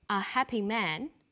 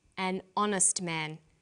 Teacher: the H is not pronounced so honest sounds like it starts with a valve and where